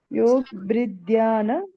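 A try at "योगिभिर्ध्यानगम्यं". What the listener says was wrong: Bri nasti bagini. Bri asti matra. Kevala B kalu. Bri na. भिर् ध्यान भिर् इत्युक्ते रेप अस्ति किल अत्र विसर्ग भवति योगिभिः विसर्गस्य रेपः इति वक्तव्यम् अत्र सो अत्र भिर्ध्यान भिर् इति वक्तव्यम् ओके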